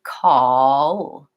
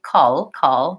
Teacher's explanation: So my front L, the front of my tongue is lifting up, and my dark L, the back of my tongue is kind of retaining this shape. And as I finish, the L sound, the front of my tongue is going up. So it sounds like call, versus if I did the front L, call, then my tongue is more of it's lifting, more of it's touching.